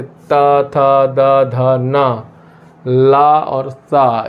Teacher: जब हमारे जीभ की नोक दांतों को टच करती है और उससे जो वर्ण बोले जाते हैं उनको दंत वर्ण कहते हैं।